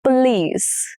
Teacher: The stress is on the last syllable which is lease.